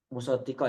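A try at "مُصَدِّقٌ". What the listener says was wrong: wah, pakai domatain. Musadikul lima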